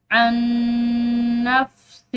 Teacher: ہم نے ادغام بالغنہ یعنی ان کو غنہ کے ساتھ ملا کر پڑھنا ہے